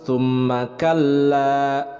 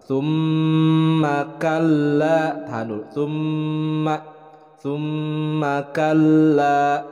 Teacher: mim bertasydid hukumnya adalah gunnah, ditahan 2 harokat